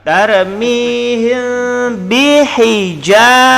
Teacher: Ikhfa syafawi. Ifa syafawi menyembunyikan bunyi mim, bibir tidak rapat.